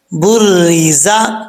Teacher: زا کی اس کے اندر سیٹی ہے کیونکہ یہ حروف صفیریہ میں سے ہے تو سیٹی پڑھنی ہے